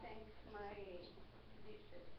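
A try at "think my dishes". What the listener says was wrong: Thank. Wait, you say thank?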